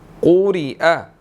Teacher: قاف کو موٹا ادا کیا جائے گا. ٹھیک ہے, را باریک پڑھی جائے گی